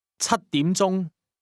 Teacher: 7 is pronounced with a high level tone.